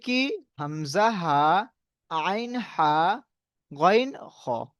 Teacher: এগুলো হালাক থেকে উচ্চারণ হয় বলে তাই হালকি বলা হয় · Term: হরুফে হালকি